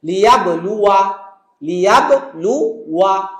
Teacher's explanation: দ্বিতীয় শব্দ লিয়াবলু, ওয়া তারপরে একটা আলিফের সার্কেল আছে, তাহলে আমরা ওয়াও জবর ওয়া পর্যন্ত পড়বো, মনে করবো আলিফটা আসলে নাই উচ্চারণের ক্ষেত্রে, বাট লেখার সময় কোরআনে অবশ্যই থাকবে।